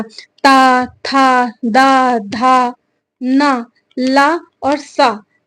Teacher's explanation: जीभ की नोक दांतों को स्पर्श करती है। ता था, अभी देखो जब हम ता बोले थे तो ऊपर, ता बोलोगे तो दांत में आके टच करेगा। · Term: दंत वर्ण